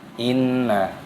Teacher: inna, nun tasdid di sini ini didengungkan